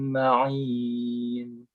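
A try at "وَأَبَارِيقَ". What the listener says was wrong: Tolong diulang. Tadi ri-nya pendek, terusnya 2 harokat. Abariqo.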